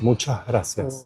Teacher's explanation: s-reduction is absolutely the norm and completely standard in Argentina